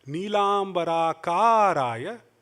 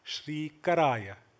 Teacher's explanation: Nilambara karaya with a long ka, Shri karaya with a short ka.